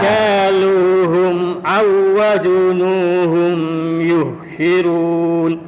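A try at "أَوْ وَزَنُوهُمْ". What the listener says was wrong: Awaza bukan wazunu. Aw wazanuhum. Khoknya kurang getar ya. Itu kha itu nanti jatuhnya. Aw wazanuhum yukhsirun ya.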